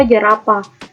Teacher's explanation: J dengan bunyi hambat laminopalatal bersuara